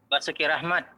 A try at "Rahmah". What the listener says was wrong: Ah, harusnya bukan Rahmat, Pak. Rahmah gitu, Pak. Pakai H kecil, Pak.